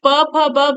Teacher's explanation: ओट से इसका उच्चारण स्थान इसका क्या है ओट है यानी प फ ब भ जब हम बोलते हैं तो होठों का प्रयोग होता है